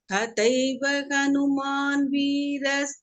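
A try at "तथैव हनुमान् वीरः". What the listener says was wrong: Say the visarga here. Tathaiva Hanuman Veeraha. You have to say the visarga there.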